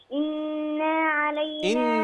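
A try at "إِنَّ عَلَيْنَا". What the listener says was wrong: مافيش الف بعد نوم يا بنتي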